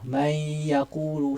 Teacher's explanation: Dengung tu mai pada nun lah. Maknanya masih berbaki saki-baki nun ketika menyebut antara nun dengan ya tu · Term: idgham naqis